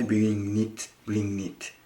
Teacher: bring G is gone, and strong N sound, and next I is linking here. So that's why bring knit.